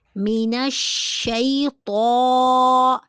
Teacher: اعوذ باللہ من الشیطان، شی حروف لین ہے اور اس کو ہم لمبا نہیں کریں گے۔ تو کے اوپر کھڑی زبر ہے، اس کو ایک الف کے برابر لمبا کیا جائے گا